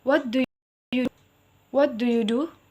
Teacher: Intonasi naik di akhir kalimat.